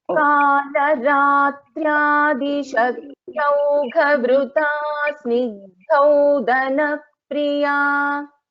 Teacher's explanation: this first dha is a Mahaprana, second dha is an Alpaprana